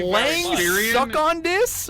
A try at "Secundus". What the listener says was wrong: Lang sucking. Lang. It looks like Len Secundus. You know, Secundus, not Suckundus.